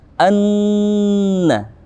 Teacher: Anna, ada nun bertasydid. Jika ada nun atau mim bertasydid, dua huruf ini bertasydid, maka hukum tajwidnya adalah ghunnah. Ghunnah kita tahan, kita dengungkan kurang lebih 2 ketukan.